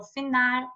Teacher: o final virou finar, né? Com esse R que a gente lembra de R de caipira, R do interior